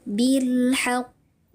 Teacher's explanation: Karena ada huruf qalqalah yang bertasydid ya. Huruf qalqalahnya bertasydid kemudian diwaqafkan ya. Qalqalah akbar yang paling besar bilhaqq.